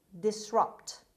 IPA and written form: dɪsˈrʌpt (disrupt)